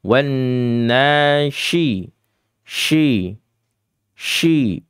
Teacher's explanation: tafasyi, menyebar atau meluas suaranya ya. Jadi ditiup dengan cara yang keras.